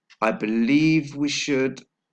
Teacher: we've got the link between the consonant sound V and W. So it's, I believe we should, and the stress is on the second syllable of the word believe.